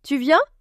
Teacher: cette façon de monter la voix à la fin d'une question